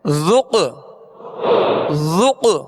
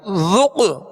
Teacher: میں جنبش ہوگی اور آواز لوٹتی ہوئی آئے گی، ذق، ذق، ذال کو نرمی سے پڑھنا ہے، ذال میں سیٹی اور سختی کی آواز پیدا نہ ہو اور ہونٹ پیش کی وجہ سے گول کرنے، ذق، قاف دال